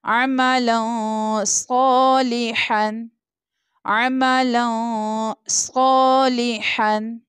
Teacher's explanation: تنوین کے بعد صاد لیٹر ہے جو کہ اخفا لیٹر ہے، سو یہاں پر ہم غنہ کر کے یعنی اخفا کر کے پڑھیں گے